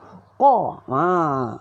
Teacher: Qaf bari atas qa, pangkal lidah tolak anak tekak dalam. Qa. Buka mulut.